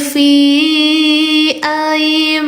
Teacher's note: I-nya ada lima. dibacanya panjangkan lima harakat. Hukum tajwidnya mad jaiz munfasil